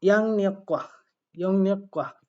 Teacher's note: দুই গিউক মিলে উচ্চারণটা একটু দ্বিত্ব হয়ে একত্রিত হয়ে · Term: দ্বিত্ব উচ্চারণের